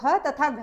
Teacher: वर्ग की दूसरी और चौथी ध्वनि महाप्राण ध्वनियां होती हैं